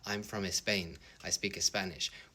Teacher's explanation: St SC SP you can't have a word starting like that in Spanish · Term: Spanish fono tactics